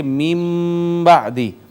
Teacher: اب نون پڑھا نہیں جائے گا، نون کی جگہ پہ میم پڑھی جائے گی۔ اب ہم من بعدی کی بجائے پڑھیں گے میم بعدی۔ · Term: اقلاب